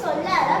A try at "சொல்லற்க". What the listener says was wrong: சொல்லற்க சொல்லணும், நீ சொல்லற.